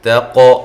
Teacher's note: تا کو باریک، قاف پہ قلقلہ